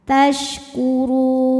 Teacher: Mad thobi'i nya wau sukun didahului baris dhommah, huruf yang disukunkan nya nun. Jika berhenti ra nya boleh panjang dua, empat atau enam harakat asal konsisten dalam sekali bacaan. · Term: mad arid lisukun